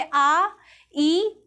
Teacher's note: मुख की जो आकृति है वो वृत्तानुमा नहीं बन रही है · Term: अवृत्तमुखी